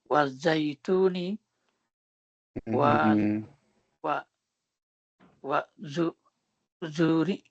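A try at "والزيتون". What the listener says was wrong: This is not a za, this is a ta.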